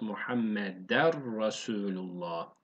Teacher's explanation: Bu nun harfini yani ne sesini siliyoruz. Bir tane re ekliyoruz. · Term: idgam bilagu